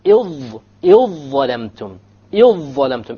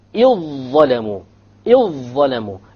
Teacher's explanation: You just ignore the dhal, you just merge it together.